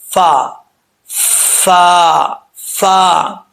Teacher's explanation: ऊपर वाला जो दांत है इन दांतों का जो निचला हिस्सा है निचला किनारा यह नीचे वाले होठ के तरी वाले हिस्से की जगह लगेगा · فوا نہیں پڑھنا، یہ غلط ہے، دونوں ہونٹوں کو گول کر کے پڑھتے ہیں، ایسا نہیں پڑھنا۔ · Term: फ का मखर